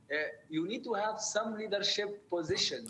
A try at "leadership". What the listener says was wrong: Make it really long. Pull it. So the problem is, guys, if you're a Middle Eastern person, an Arabic speaker, the Arabic R sound is very short, but the American R sound, it's long.